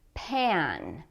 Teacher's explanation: when we say pan, we need to make the ah sound with the mouth quite open. Ah. Be careful that this doesn't sound like pen, like what you write with.